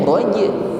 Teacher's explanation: huruf jim yang bersukun, kita tampakkan bunyi pantulan. Pantulannya ringan